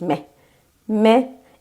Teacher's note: vurgulu hece baştaki hece O yüzden kısa i sesini duyuyorsunuz